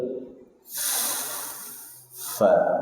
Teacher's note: Fa, hams jangan dibaca pa ya, pi, nggak ada pi dalam huruf Arab.